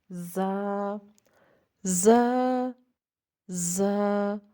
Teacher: زبان کی جو نوک ہے وہ ہمارے جو اوپر کے 2 دانت ہیں اور 2 نیچے کے دانت ہیں، اس کے درمیان جب ہماری زبان لگتی ہے تو زا کی ادائیگی ہوتی ہے، یعنی کہ سیٹی کی آواز آتی ہے۔ · زبان جو ہے وہ نیچے والے دانتوں کے نیچے جو ہمارے 2 دانت ہیں وہاں جو ہے وہ نیچے لے کے جائیں، تو وہاں پہ آپ کی سیٹی جو ہے وہ نکلے گی